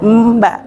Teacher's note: ikhfa masih samar-samar tapi langsung ke ba. Tapi masih ada sedikit rongga yang keluar. Mbak agak ngerenggeng gitu ya.